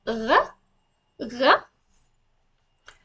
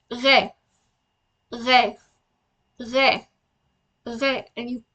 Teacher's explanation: it's a French R, so you can pronounce it. It's a little gurgle from the deep throat.